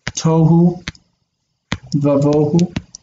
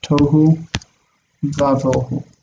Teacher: where the vav takes an ah sound. This is not the normal pointing of vav.